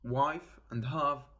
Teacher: these sounds are made using the upper teeth and the lower lip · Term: lab Uden tools